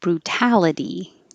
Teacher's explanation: The first T stays a T, even though it's between two vowels, the U and the A, because it's in the stressed syllable.